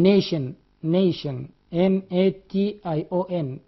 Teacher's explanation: TI, it sounds sha as in nation.